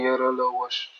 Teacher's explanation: ज्या व्यंजनाचा उच्चार करता उच्चार स्वरासारखा येतो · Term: अर्धस्वर